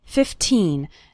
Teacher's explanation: remember to pronounce the second syllable of 15 nice and strong